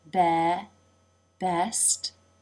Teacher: lips come together for the B and the jaw drops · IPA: [ɛ]